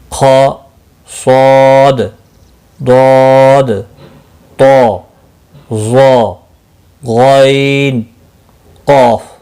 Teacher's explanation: حروف مستعلیہ کو ہمیشہ ہر حال میں پر یعنی موٹا پڑھتے ہیں اور ان کا مجموعہ خص ضغط قز ہے، یہ یاد رکھیں، یہ اسی کے اندر سارے حروف موجود ہیں۔